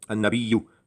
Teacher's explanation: An-Nabi, so N-A-B-Y. Now there's a double N because that replaces the L, so it's A-N-N, in other words.